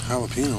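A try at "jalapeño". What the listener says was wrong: the J's silent. You're saying it wrong.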